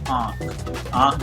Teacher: जैसे आंख, आंख जब बोलोगे आप देखोगे कि आधी आवाज नाक से आती है और आधी आवाज मुंह से आती है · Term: अनुनासिक